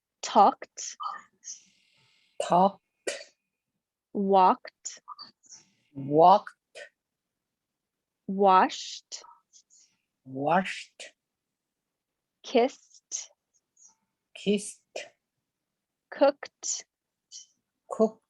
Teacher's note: If you are repeating after me and feeling your throat, you don't feel anything at the end of that word. And you hear the T sound. Kt, kt, st, st, kt.